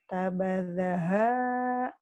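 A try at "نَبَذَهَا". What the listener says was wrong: nah titiknya satu, nabadaha, kemudian yang ini ada yang SMS sama saya.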